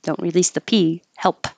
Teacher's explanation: you're not going to hear the P on help, but your tongue does have to go to that position.